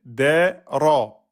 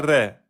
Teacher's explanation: On a dit le ra, il est fatha. Donc, c'est ra emphatique, pas ré